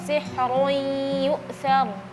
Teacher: sihrun sama yu'thar ra-nya sama-sama tebal. Jadi ra yang sihrun tadi kurang tebal.